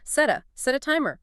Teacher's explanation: That little connection between set and a. It should be really fast, almost like one sound.